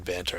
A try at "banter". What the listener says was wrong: But banter, it's banter. It's not banner. It's banter.